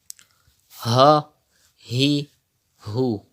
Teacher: Pronounce it from the bottom part of your throat. Do not read as ha, he, hu.